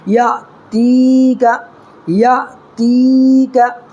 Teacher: ہے، یا ساکن سے پہلے تا کے نیچے زیر ہے تو یا مدہ ہوگا، اس کو ایک الف برابر کھینچ کر کے پڑھیں گے